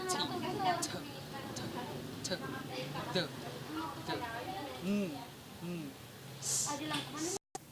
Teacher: sound produced with the front of tongue against the alveolar ridge. Alveolar ridge is the part of the roof of the mouth that is right behind the teeth. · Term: Alveolars